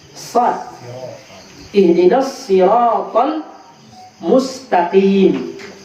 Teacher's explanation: Ihdinas sirat bukan sin, sad. Dia agak berat daripada sin.